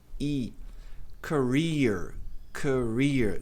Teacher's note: Dois e em inglês com raríssimas exceções. Tem som de i longo, tem até que dá um sorrisinho.